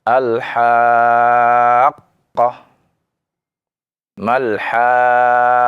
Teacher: kita naikkan suaranya tekanannya ya. Karena di sana ya ada tasydid ya disertai mad ya. · ketika dibaca dhal, naikkan suaranya, ya, untuk menunjukkan, ya, di situ ada mad dan ada syiddah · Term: nabr, naber